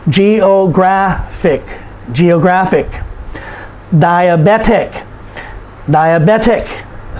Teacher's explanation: because it ends in IC, we put the emphasis on the second to the last syllable